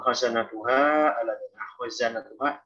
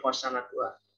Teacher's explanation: Jadi membedakan zai sama sin itu sifat jahar.